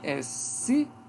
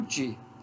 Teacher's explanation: comparar o C, que é uma consoante constritiva alveolar surda, com o D, que é uma consoante africada alvéolo palatal sonora, muito diferente essas duas.